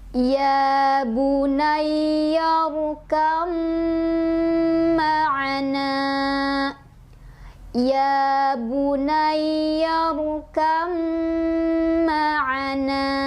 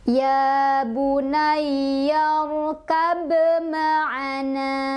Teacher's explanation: Jadi ba sukun yang memiliki sifat hukum qalqalah sudah tidak dibaca lagi pantulannya, melainkan kita langsung dibaca ke mimnya sambil ditekan dan ditahan 2 ketukan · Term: gunnah